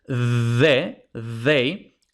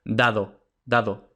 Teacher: en español no hay turbulencia en español es un sonido mucho más ligero